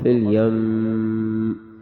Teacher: وقف میں غنہ کر کے آواز ختم ہو جائے گی